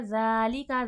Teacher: ذال نرمی کے ساتھ اور کھینچ کر